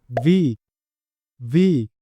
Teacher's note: থাকি ভি, ভি না, আমরা বলবো ইংরেজিতে ভি, ভি না, ভি, উপরের দাঁত নিচের ঠোঁটের সাথে স্পর্শ করে ভি